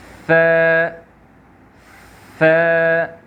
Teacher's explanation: زبان کا جو ٹپ ہے یہ ہمارے سامنے کے جو دو دانت ہیں اس کے ٹپ کو ٹچ کرتا ہے